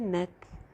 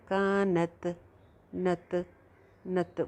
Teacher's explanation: تا کے اوپر آپ نے سانس چلانا ہے، اگر آپ نے سانس روکا تو بنے گا کانت، نت، نت، وہ دیکھیں باؤنس ہو رہا ہے، جیسے اچھل جاتی ہے آواز، تو وہ آواز کو اچھالنا نہیں ہے بلکہ سانس کو ہلکا سا چلتے رہنے دینا ہے تاکہ قلقلہ کسی جو صفت ہے وہ پیدا نہ ہو۔